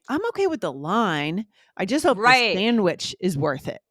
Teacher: we're putting the emphasis on line and sandwich